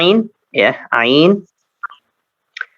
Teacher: Harus diperhatikan, harus dibawa ke sana ya. Agak sedikit ditekan ya sehingga tenggorokan hampir tertutup ya. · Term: Huruf ain